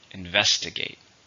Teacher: It's a verb. How many syllables are in investigate? 4, stresses in the second,